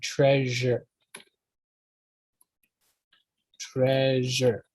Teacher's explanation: It's not those other pronunciations, but it's a, like I said, it's a je sound. It's not sh, but je.